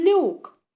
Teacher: і ми вже чуємо що наша буква Л попереду м'яка